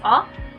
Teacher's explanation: It is an open front unrounded vowel